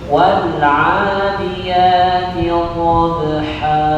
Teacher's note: Dhad dari sisi lidah menempel pada gigi geraham tidak boleh dikeluarkan.